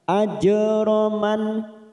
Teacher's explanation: huruf jim sukun, qalqalah sugro karena mati di tengah kalimat, jangan lupa dipantulkan. Ajraman, nun sukun bertemu hamzah idhar halqi, kita baca jelas.